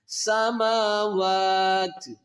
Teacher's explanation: الى السماء فسواهن، ہنہ پہ نون مشدد ہے، یہاں پر غنہ کریں گے، ہن فسواہن 7 سماوات، اس واو کو کھینچ کر تا کے ساتھ ملائیں گے اور تا کو ساکن کر دیں گے۔ سماوات سٹاپ کریں گے جب، یعنی کہ وقف کی حالت میں، سماوات۔